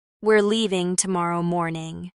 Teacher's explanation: Stress leaving. And tomorrow morning. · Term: stressed words